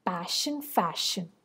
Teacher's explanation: So here we have the word ends not with a stress syllable but with an unstressed syllable, and these unstressed syllables also rhyme. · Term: feminine rhyme